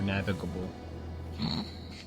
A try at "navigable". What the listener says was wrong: I know, it just sounded like you didn't add the T to it. Navigable. There's no T in navigable? Like navigatable? Navigatable? It's navigable?